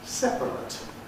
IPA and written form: ˈsepərət (separate)